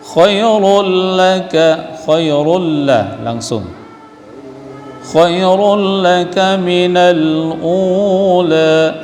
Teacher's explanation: Khairul, rul baris tanwin jumpa dengan lam idgham bila gunnah. Lam ra idgham bila gunnah, dua huruf lam ra.